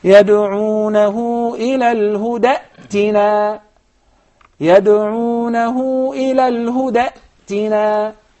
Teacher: I did not pronounce the first hamza. Rather, I did pronounce the second one. But when I begin with the word i'tina, then I will exchange the second hamza into a mad letter and I will say i'tina.